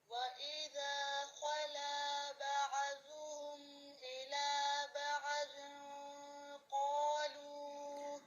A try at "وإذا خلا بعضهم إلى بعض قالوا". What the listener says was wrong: عین ساکنہ کی جو ادائیگی ہے اس کو فوکس کریں، ایسے نہیں پڑھنا، ابھی میں نے پہلے بھی بتایا، نو یہ جھٹکا ہو جاتا ہے، سمپل ساؤنڈ نو، خلا بعضهم